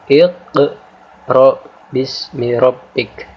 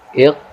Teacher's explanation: Maka cara membaca qaf yang berharokat sukun ini kita baca dengan qalqalah sughra, yaitu kita baca huruf qaf di sini dengan cara menekan dan sedikit memantul sehingga jelas qaf mati di sini